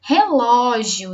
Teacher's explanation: nós descobrimos que o ló é a sílaba mais forte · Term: sílaba tônica